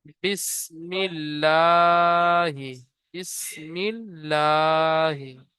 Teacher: লামের উপরে তাজদিদ এসেছে, তাজদিদ ওয়ালা অক্ষরকে দুবার পড়তে হয়, প্রথমে ডান দিকের অক্ষরের সাথে মিলিয়ে, তারপর এর নিজে নিজে।